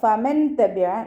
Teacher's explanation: നൂൻ സാക്കിനയ്ക്ക് ശേഷം ഇഖ്ഫാഇൻ്റെ അക്ഷരമായിട്ടുള്ള ത വന്നു. നൂൻ സാക്കിനെ മറച്ചു വെച്ച് മണിച്ചോതി കൊടുക്കുക.